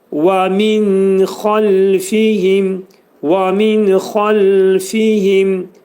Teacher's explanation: Xalfihim dedikdə ləmin məxrəcini saxlayırıq, yumuşaq deyirik.